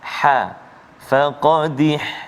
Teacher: Tempat keluar dia dekat tengah halkum kita kan. Kat tengah rongga halkum kita ni. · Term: ha pedas